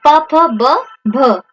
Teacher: जो बा ध्वनि है ये किसके अंतर्गत आएगी? ये ओष्ठ, ठीक है, ओष्ठ ध्वनि के अंतर्गत आ जाएगी